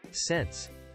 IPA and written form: sɛns (Sense)